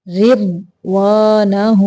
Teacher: را باریک ہے ضاد کو مٹا پڑھنا ہے